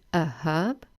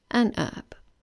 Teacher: In British English, the H is pronounced, but in American English, it's silent. So in British English, we say a herb, and in American English, they say an herb.